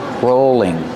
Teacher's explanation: use a long o sound for row rolling and the L is between vowels so it's a light l · And the L is between vowels, so it's a light L, rolling. This is called a rolling pin.